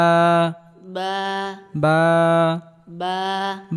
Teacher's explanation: বা বা বা বা বা বা বা উচ্চারণ হয় দুই ঠোঁটের ভেজা অংশ হতে। বা বা বা বা তা তা তা তা তা তা তা উচ্চারণের ক্ষেত্রে হালকা বাতাস বের হবে।